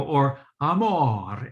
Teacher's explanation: the m is like super fast and light and the vowel is long